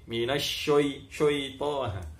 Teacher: Tidak boleh dikasih tebal itu huruf shin karena dia sifatnya istifal ki, tidak isti'lak, tidak tebal ki, tipis ki